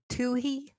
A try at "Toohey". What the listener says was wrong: It's silent! The H is silent!